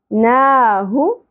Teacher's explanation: ہا اقصی حلق سے گہرائی کے ساتھ بغیر سانس کی آواز کے ، اور پیش کو زیادہ نہیں کھینچیں گے، نا ہو، والقمر